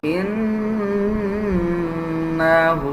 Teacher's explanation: نون کے اوپر شد ہے، غنہ کریں گے